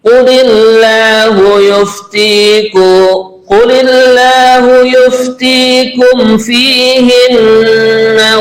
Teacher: mim mati ketemu fa namanya adalah izhar syafawi nggih kita baca jelas